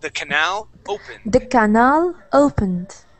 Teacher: that word is pronounced canal with the accent at the end